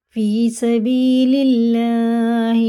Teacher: اللہ کا نام زیر سے باریک پڑھیں گے